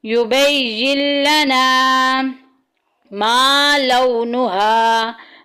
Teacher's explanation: अलिफ मद्दा का कायदा जारी हो रहा है, एक अलिफ के बराबर लंबा करेंगे।